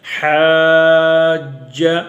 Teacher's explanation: حا زبر الف مد جیم، جیم کے ساتھ ملانا ہے، حاج، حاج، جیم زبر جا، حاج، حاج، ہا کو لمبا کر کے جیم سے ملانا ہے